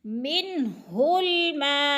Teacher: मद मुत्तसिल 4 हरकत के बराबर खींच कर पढ़ी जाती है। हरूफ मद्दा के बाद अगर हमसा उसी कलमे में हो तो फिर मद मुत्तसिल होती है, तो लिहाजा मिनहुल मा को खींच कर पढ़ना है।